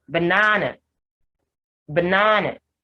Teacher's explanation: banana has the schwa sound for the first a and the schwa sound for the third or the last a · So the first and the last A's are unstressed and they have the schwa sound.